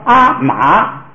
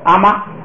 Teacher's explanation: 这意思，就是说如果一个词有2个字，就是有第2个字， 第2个音节的低声调一律变为高平调，就是2声要变1声